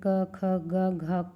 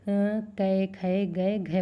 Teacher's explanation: क ख ग घ को कै खे गए घे बोलते हैं, ये हरियाणा में यूज़ किया जाता है।